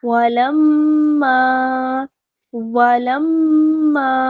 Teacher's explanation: الف مدہ ہو رہا ہے تو 2 حرکات لمبا کریں گے